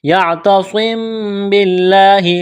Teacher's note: لفظ اللہ کے نام سے پہلے زیر ہے، باریک کرنا ہے لفظ اللہ کے نام کو